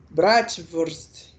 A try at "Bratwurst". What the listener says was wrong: Você só errou a pronúncia do W, que é F, é Bratwurst. Furst.